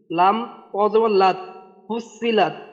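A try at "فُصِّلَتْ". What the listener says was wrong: আচ্ছা আসল ভাই, এই এটা কিন্তু এটা কিন্তু ত বললে হবে না, এই যে দুই নোক্তাওয়ালা এটা হলো তা, লাম তা জবর লাত, ফুসিলাত।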